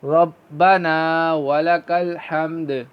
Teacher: اور دال کو ہم ساکن کر رہے ہیں اس لیے اس میں قلقلہ ہوگا